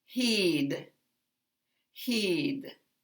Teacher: here we have a long vowel but we also have it longer because it's followed by a voiced consonant so this word is the longest heed heed and when we